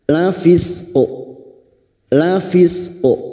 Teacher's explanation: Wakafkan pada 2 huruf yang huruf sebelumnya sudah mati atau sukun, maka keduanya harus terasa sifatnya. Sifat qalqalahnya pada huruf qaf harus tetap ada, tidak dihilangkan.